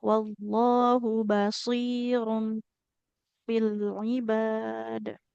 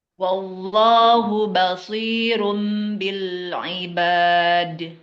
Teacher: Ba basir jadi bnya tipis.